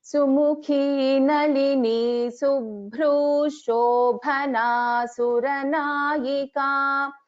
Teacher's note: So there is a Shakara sound, additional Shakara there, and the Visarga will not be heard.